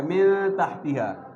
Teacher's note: یہاں پر من تحتیہا، یہاں پر نون ساکن کے بعد تا آیا ہوا ہے، تا حروف حلقی بھی نہیں ہے، لام را بھی نہیں ہے، الف بھی نہیں ہے، یہاں پر بھی غنہ کیا جائے گا